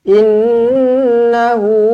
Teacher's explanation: nun sabdu wajibul gunnah, dengungkan dua harokat. Hu, dua harokat.